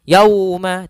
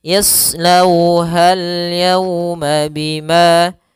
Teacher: Kemudian yauma sama seperti sebelumnya pada lafal lau, yaitu ada bacaan lin, yaitu lembut dalam pelafalannya dan tidak boleh dihentakkan. Tidak boleh yauma, tidak, tapi dia lembut saja.